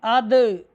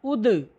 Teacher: اس کے آخر میں جنبش ہوگی، اس کو ہم ہلائیں گے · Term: حروف کلکلہ